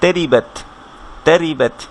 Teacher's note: রয়ের নিচে যখন কাসরা হচ্ছে তখন এটা চিকন হচ্ছে,